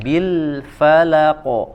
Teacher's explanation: Fa ya fathah, la fathah dibaca tipis keduanya, kemudian dibuka mulutnya.